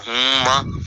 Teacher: اب ہما نہیں پڑھنا بلکہ ہما، کیونکہ میم پر شد ہے تو شد والے حرف کو دو بار پڑھا جاتا ہے